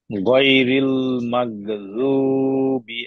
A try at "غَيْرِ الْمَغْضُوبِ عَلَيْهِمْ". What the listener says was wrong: জিব্বার আগায়, দুই দাঁতের আগায় লেগে যাচ্ছে, এটা লাগানো যাবে না।